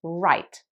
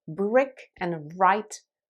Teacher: your tongue is at the top of your mouth when you say right it's kind of slightly rolled the sides of your tongue are sort of touching your palate and the tip of your tongue is not actually touching anywhere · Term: r sound